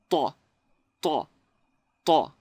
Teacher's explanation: the letter ta in Arabic is pronounced by pushing the front middle part of the tongue away from the roof of the mouth · the tongue is actually not close to the teeth, but moved back a little bit